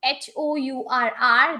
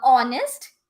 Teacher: though the word is starting with H, yes, but the H is silent, right? H is silent, and from the next word, next letter, the pronunciation is starting, and that's why we are using and.